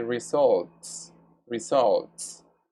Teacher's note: The T sound is voiceless. So we say results, results. It's pronounced with S.